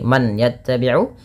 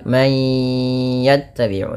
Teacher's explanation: masukkan bunyi suara nun kepada huruf ya bukan lagi man yattabiu tapi menjadi may yattabiu sembari ditahan dua harakat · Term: idgham bighunah, idgham bi gunnah